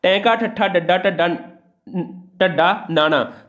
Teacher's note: ਸਾਡੀ ਜੀਭ ਹੈ ਜਿਹੜੀ ਉਲਟ ਹੋ ਕੇ ਤਾਲੂ ਨਾਲ ਲੱਗਦੀ, ਇਸ ਕਰਕੇ ਇਹਨੂੰ ਉਲਟ ਜੀਭੀ ਜਾਂ ਮੂਰਧਨੀ ਵੀ ਕਿਹਾ ਜਾਂਦਾ ਹੈ।